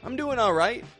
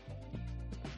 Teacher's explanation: Peak up your tone on that ite.